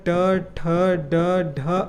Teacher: ट वर्ग के सभी वर्णों का उच्चारण मूर्धा से होता है